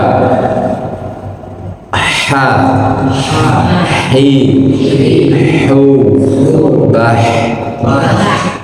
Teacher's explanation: diucapkan dengan halus, dengan lembut, jangan sampai tertukar dengan kho